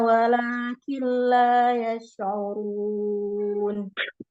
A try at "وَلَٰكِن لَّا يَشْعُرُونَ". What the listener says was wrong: يشعرون، حاول أن تأتي بصفة التفشي في الشين. يشعرون.